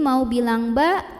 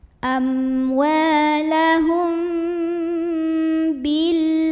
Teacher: Amwalahum, ada ikhfa syafawi karena ada mim sukun yang ketemu sama huruf ba. Maka mim sukunnya ini dibaca dengung dulu ya. Jadi mau bilang ba, tahan dulu mimnya. Amwalahum bil.